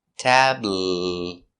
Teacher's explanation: It's a light L. The tongue's in the front.